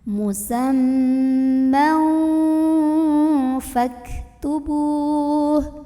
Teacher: Karena ada tanwin fathah yang ketemu sama huruf fa. Maka tanwin fathahnya dibunyikan samar-samar, mau bilang fa sambil dengung. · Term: ikhfa ausat